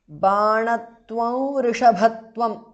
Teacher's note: because of sandhi anuswara changes to the nasal of va